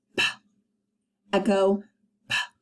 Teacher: When we make the p sound, our lips are popping.